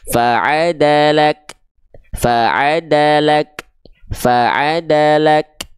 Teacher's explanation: Jangan lupa tadi huruf kaf sudah kita bahas, dia punya sifat hams yang kadarnya percikan nafas, maka dipercikan saja di sini huruf kafnya